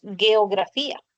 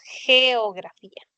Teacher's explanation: el sonido pertenece a la fricativa velar sorda que es el sonido de J